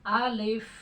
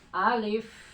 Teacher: Alif karena alif itu memiliki sifat hamas. Jadi ketika diucapkan alif ya, udara itu tetap keluar, nggak tertahan. Alif. Jadi pakai F bukan P.